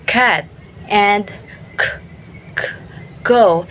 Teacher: The back of the tongue touches the soft palate. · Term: velar